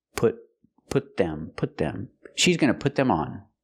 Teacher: And if I use a pronoun, I say she's going to put them on. Here the T is pronounced with a stop T.